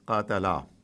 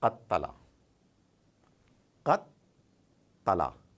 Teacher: So there is a stop like jazm and then push forward ta, qattala. So this is because there are two ta that have come together and they're not written together. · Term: tashdid